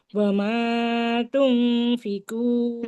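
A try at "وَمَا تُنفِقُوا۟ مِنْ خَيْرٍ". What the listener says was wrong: Meme-nya, meme-nya agak kepanjangan ya. Dua harokat aja. Meme-nya dua harokat saja, jangan lebih. Wa ma tunfiqu.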